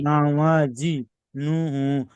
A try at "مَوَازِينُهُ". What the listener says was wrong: নুন হাফেশ নু, নু হু নয়, নু, এখানে আয়াতের শেষে আপনি থামছেন, সেই ক্ষেত্রে হা সাকিন করে পড়তে হবে। ওই যে হায়ের উপরে উল্টা পেশ এসছে, উল্টা পেশটাকে সাকিন করে পড়তে হবে।